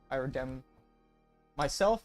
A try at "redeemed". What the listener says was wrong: I like how you didn't say redeemed. You said redemned.